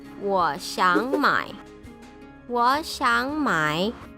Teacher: You can choose between third, second, third, or second, second, third.